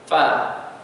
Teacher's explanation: Perut bibir bawah bersama hujung gigi atas hadapan. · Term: huruf fa